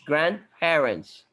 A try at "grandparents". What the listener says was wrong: لا انت اتكيت على شفافك كتير. البي is very light خفيفه.